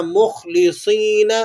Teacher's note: صاد کو بھی آپ نے موٹا کر کے ادا کرنا ہے۔